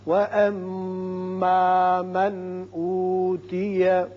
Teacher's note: یہاں نون ساکن کے بعد حمزہ ہے، لہذا ہم یہاں اظہار کریں گے، اظہار حلقی.